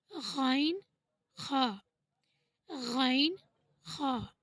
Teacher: تو آپ عام شبدوں میں یہ سمجھ لیں کہ جیسے آپ کے گلے میں کچھ پھنس گیا ہو اور ہمیں اسے نکالنا ہے، تو ہم کس طرح سے اپنے گلے میں زور دیتے ہیں، ٹھیک ہے، اسی طرح سے ہم کو غین خا، غین خا بولنے میں زور دینا ہے، ٹھیک ہے۔ جب ہم غین اور خا کی ادائیگی کرتے ہیں تو آپ لوگ کو ایک گنگناہٹ سی محسوس ہوگی گلے کے اندر